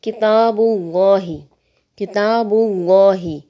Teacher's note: تو لفظ اللہ کو مفخم پڑھیں گے یعنی موٹا کر کے پڑھیں گے · لفظ اللہ سے پہلے پیش ہے تو ہم نے لفظ اللہ کو موٹا پڑھا